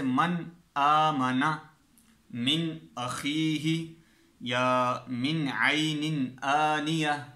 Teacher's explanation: نون ساکن ہوگا یا نون تنوین ہوگا، وہ ظاہر کر کے پڑھنا ہے، اظہار کرنا ہے اس کا